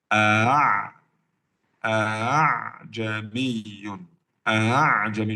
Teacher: Jadi bukan hamzah, bukan ain, bukan ha, tapi di antara hamzah dan alif mad. Di antara hamzah dan alif mad. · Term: tashil